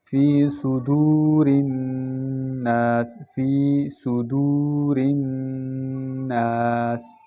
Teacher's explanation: واو ساکن سے پہلے پیش ہو تو واو مدہ اور واو مدہ ایک الف مقدار کہہ جاتا ہے